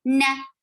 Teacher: And for fatha, the fatha is very short. Na, gunna is long, but not the fatha.